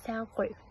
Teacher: Бірақ қой дегенде қ әрпі н әрпіне әсер етіп, оны ң әрпіне өзгертеді, яғни сән қой. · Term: Кейінді ықпал